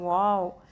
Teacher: جب واؤ کہتے ہیں تو آپ کی جو ہونٹ ہیں وہ آپس میں نہیں ملتے، وہ آپس میں خلا سا بن جاتا ہے